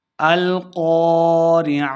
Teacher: قاف کو موٹا پڑھنا ہے، عین کو تلفظ سے پڑھنا ہے اور آخر پہ ہم نے وقف کرنا ہے، ہا کی آواز آئے گی۔